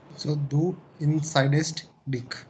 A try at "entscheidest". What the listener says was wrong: Extra E.